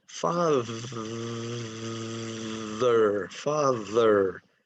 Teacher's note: If you've been pronouncing it unvoiced, now is the time for you to learn that father is voiced.